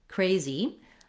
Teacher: The stress is on the first syllable, cray. We see that marked in the dictionary with a little line before the first syllable.